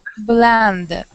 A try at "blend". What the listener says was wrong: right now you're saying blah we want to say BL Blen try that blend